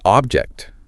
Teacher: But when we say object, that first syllable, it gets reduced. It's quick. It's almost mumble. You barely have to open your mouth for it before you transition right into that forceful JCT sound.